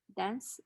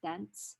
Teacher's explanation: a voiceless stop is inserted between the nasal and the alveolar fricatives to ease the pronunciation